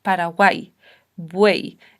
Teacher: en vez de dos vocales juntas en un golpe de voz, serían tres vocales juntas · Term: triptongos